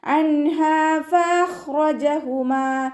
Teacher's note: നൂൻ സാക്കിനെ വ്യക്തമാക്കി മണിക്കാതെ ഉച്ചരിച്ചു കൊടുക്കുക കേട്ടോ. അൻഹാ ഫഖ്റജഹുമാ അൻഹ എന്ന് പറയരുത്.